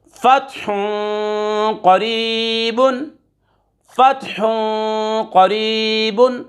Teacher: دو پیش کی تنوین کے بعد قاف حروف اخفا میں سے آ رہا ہے، غنہ کر کے پڑھیں گے، اخفا کریں گے۔